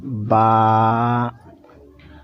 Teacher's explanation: دونوں ہونٹوں کے تری والا حصہ یعنی بھینگے ہوئے حصے سے، دونوں ہونٹ کے بھینگے ہوئے حصے سے با ادا ہوگا